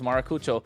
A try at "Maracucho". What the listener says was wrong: you're forgetting to roll the R, man. Maracucho, yeah.